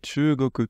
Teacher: on a transformé un son non voisé en son voisé pour faciliter la prononciation. En japonais, du coup, quand on voise une consonne, ça se voit directement parce qu'on a ce dakuten. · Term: liaison dakuten